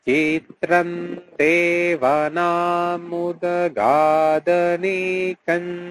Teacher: যেহেতু দ রয়েছে তাই সেই বর্গের যে পঞ্চম ধ্বনি দন্তান্নয়ের উচ্চারণ এখানে করা যায়। চিত্রম এই উচ্চারণটাও করা যায় অথবা চিত্রান এই উচ্চারণটাও করা যায়।